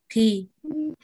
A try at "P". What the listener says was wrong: Is P. Not P. Huh? Not P. Like in Spanish. In English, it's pa.